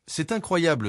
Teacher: cet incroyable s'accentue sur la syllabe blée à la fin du groupe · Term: accent tonique, L'accent tonique